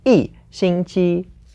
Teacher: because 星期 is first tone, we have to change the 一 to the fourth tone. So it becomes 一星期.